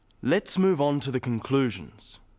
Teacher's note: stressing conclusions because it's the key word in the sentence